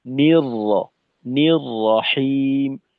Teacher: দেখেন বিসমিল্লাহ পড়তে গেলে আমাদের কোথাও ঠোঁটটাকে গোল করার প্রয়োজন নেই, ঠোঁটের কিনারাকে টান টান রেখে তারপর তেলাওয়াত করতে হবে, কারণ এখানে ঠোঁট গোল করার মতো কিছুই নেই। নির র, নির রহিম, এই পুরোটা পড়ার সময় ঠোঁটের যে দুই কিনারার দূরত্ব এটাকে একই রকম রাখা, এখানে কম বেশি হবে না।